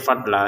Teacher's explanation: Untuk ini tulisannya fadlan tapi kita bacanya fadla ya. dibaca panjang dua harakat untuk lamnya karena kita berhenti di sini.